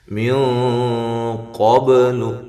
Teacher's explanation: وہی کیفیت یہاں ہونی چاہیے، نا الف مدہ ہے، من قبل یہاں نون ساکن کا اخفا ہے لیکن موٹا اخفا ہے، قاف کو بھی موٹا کرنا ساتھ